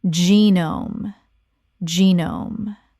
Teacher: Two syllables. The g makes a j sound, and the e is long.